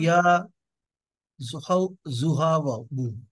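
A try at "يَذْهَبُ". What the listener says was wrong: না না, ইয়া এসে জালকে ধরবে। ইয়াজ হাবু, একসাথে বলেন।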